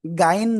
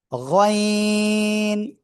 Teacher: তিন আলিফ টান হবে, গইন।